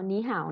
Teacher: Phần biến điệu của thanh ba thì hôm qua mình cũng đã nói rồi. Tức là khi hai âm tiết thanh ba đi cùng với nhau thì âm đầu sẽ đọc thành thanh hai